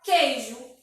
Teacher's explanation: Mas percebe que quando a gente pronuncia, o U não sai. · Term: dígrafo